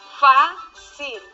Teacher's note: su acento está en la penúltima sílaba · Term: palabra grave